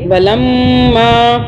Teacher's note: میم پہ آپ نے میم کو ہلکا سا میم کا غنہ بنا کے میم کے اوپر شد ہے تو جس کی وجہ سے ہم 2 سیکنڈ کے لیے منہ میں رکھیں گے